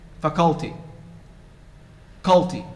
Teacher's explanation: But most of you say faculty, culty. You stress the second syllable.